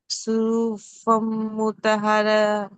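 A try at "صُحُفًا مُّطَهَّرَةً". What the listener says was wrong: మీరు కొంచెం దీర్ఘం తీయాల్సింది తక్కువ తీస్తున్నారు కొంచెం పెంచాలి దాన్ని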